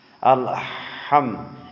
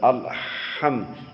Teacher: সূরা ফাতিহার পড়ার সময় আমরা অনেকে এই সূরা ফাতিহা পড়তে গিয়ে আল-হাম, এখানে আল-হাম, হা এবং হা দুই প্রকার, একটা আছে হাই হাওয়াস, একটা হাই হুত্তি। হাটা মাখরাজে চাপা দিয়ে পড়তে হবে, একটু হালকা।